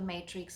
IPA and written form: ˈmeɪtrɪks (matrix)